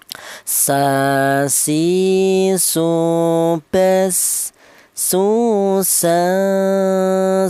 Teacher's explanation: Huruf sin ini keluarnya huruf berasal dari ujung lidah menyentuh pangkal gigi seri bawah